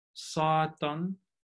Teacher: So if you look at the first example here on the left-hand side, the word for Satan, when we just have the bare noun, stress goes on the first syllable, and then that vowel is realized as long because it's a stressed syllable